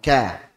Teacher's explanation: Berikutnya untuk kaf, maka suaranya tidak naik. Jadi dia tidak naik, langsung keluar. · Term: istifal